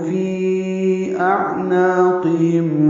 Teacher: نون کو دو حرکات لمبا کریں گے، قاف پر ہے، ہا اقصی حلق سے نکالیں گے اور میم ساکن پہ اظہار شفوی ہے · فی میں مد منفصل ہے، یا مدہ کے بعد دوسرے کلمے میں حمزہ آنے کی وجہ سے. حمزہ اقصی حلق سے عین وسط حلق سے ادا کریں گے اور عین ساکن پہ اظہار ہوگا.